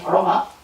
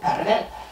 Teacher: you may notice that the R, when I say Roma, is slightly different to the R when I say, for example, Paravel. It's slightly retroflexed.